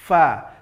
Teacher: Mana makhraj dari huruf fa? Huruf fa ini makhrajnya adalah ujung gigi seri atas, tempelkan ke bibir bahagian bawah